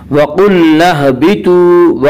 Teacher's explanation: قاف کو پر پڑھیں گے، قاف حروف مستعلیہ میں سے ہے، حروف مستعلیہ 7 ہیں جن کا مجموعہ خصہ ضغط نقض ہے، جو ہمیشہ ہر حال میں پر پڑے جاتے ہیں۔